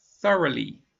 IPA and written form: ˈθʌr.ə.li (thoroughly)